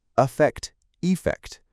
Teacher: Both are stressed on the second syllable, but the first syllable in effect with an a is pronounced with a schwa sound.